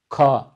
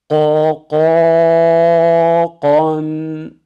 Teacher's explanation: şayet nefesi akıtır ka şeklinde okursak harf kaf olmaktan çıkar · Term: cehir sıfatı